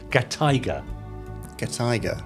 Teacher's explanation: Put gatai together with tiger, and you get gatiger, with the emphasis on the tai, i.e. gatiger.